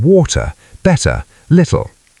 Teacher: Feel comfortable with light glottal stops for T in water, better, little.